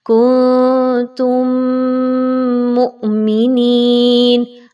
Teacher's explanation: یہاں پر آپ نے اچھے سے میم مشدد کا غنہ کرنا ہے، کنتم مؤمنین، حمزہ کے اوپر جزم کی علامت، تو اس کو جھٹکا دے کر پڑھیں گے۔